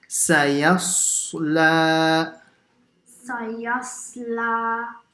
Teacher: And the second one is a swad. So sin, remember, it's an empty mouth letter. Only the swad is a full mouth letter.